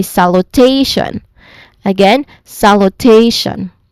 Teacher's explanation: So the first syllable has a secondary stress but yeah the stressed um the more emphasized syllable here is the third syllable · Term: primary stress